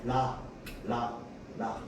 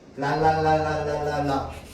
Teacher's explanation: 혀 끝을 윗 잇몸에 대었다가 떼면서 내는 소리를 리을로 발음하죠.